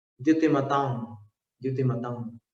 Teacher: अनुस्वार का उच्चारण जो होता है नासिक अनुस्वारस्य, अनुस्वार का उच्चारण स्थान नासिका है।